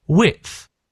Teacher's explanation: the D is almost as if the D isn't there at all